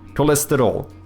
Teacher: both of those e becomes silent pretty much in uh European Portuguese. So you kind of end up having almost like an LST cluster LSTR even. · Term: closed vowels